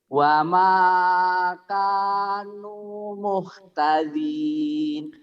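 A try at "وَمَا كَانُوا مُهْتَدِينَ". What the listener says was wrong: Dinnya jangan ragu, keras, muhtadin, din, dada di.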